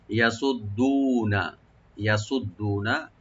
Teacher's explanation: ইয়াটাকে open করে পড়বো আর সোয়াটাকে deep করে, দালটাকে ডবল করে এক আলিফ টানবো আর নুনে কোনো টান নাই লাস্টে, ওপেন করে পড়বো ইয়াসুদ্দুনা, ইয়াসুদ্দুনা